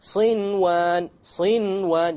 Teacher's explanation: You pronounce the noon. In this case, the ruling would be idhar. You make it clear. Okay? Without any ghunna, you make the noon clear and you move on. · Without any ghunna, you make the noon clear and you move on. Why? Because it's in one word.